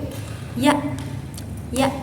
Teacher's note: Dan yang terakhir adalah huruf Ya. Nah, huruf Ya ini keluar dari tengah-tengah lidah dan langit-langit atas bagian depan